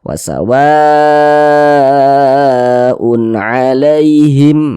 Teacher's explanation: Karena huruf ain ini huruf izhar halqi, maka ini izhar halqi. Dibaca izhar itu dibaca jelas, tidak berdengung, pendek saja kita baca.